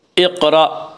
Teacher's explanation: اقرأ قاف میں قلقلہ ہوگا۔ قاف حروف قلقلہ میں سے حروف قلقلہ 5 ہیں جن کا مجموعہ قطب و جدن ہے، یعنی قاف، طا، با، جیم، دال۔